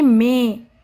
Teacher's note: इसका जब हम उच्चारण करते हैं ना तो नाक और मुंह दोनों से ध्वनि निकलती है